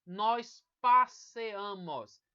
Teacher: Não vai ter mais a letra i. A sílaba tônica vai estar na desinência, então perde-se o i.